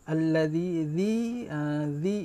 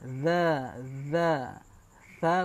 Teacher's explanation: hujung lidah yang dikeluarkan di antara Gigi atas dan Gigi bawah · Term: Zal